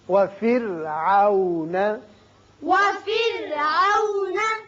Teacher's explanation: را کو باریک پڑھیے اس لیے کہ پیچھے زیر ہے